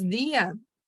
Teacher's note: Neste caso, gente, a vogal fraca vai ser acentuada, ela precisa ser acentuada. Porque quando nós falamos dia, a vogal mais pronunciada, mais saliente, mais forte nesse caso, vai ser justamente a vogal i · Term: hiato tônico